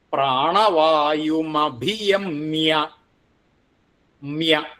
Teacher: അവിടെ ഭി എന്നുള്ളത് ഘോഷാക്ഷരാണ്. പിന്നെ വായും അഭിയമ്യ എന്നുള്ളത് കൂടി വരുമ്പോൾ അനുസ്വാരം മകാരായിട്ട് പ്രാണവായുമഭിയമ എന്നാവും. പ്രാണവായുമഭിയമ്യ മ്യ.